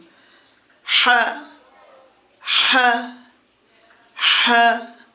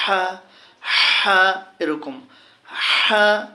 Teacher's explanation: এই হা যখন আমরা বলবো গলার ভিতর থেকে এটা মাখরাজ চিন্তা করলে বন্ধুগণ এটি দুই নম্বর মাখরাজ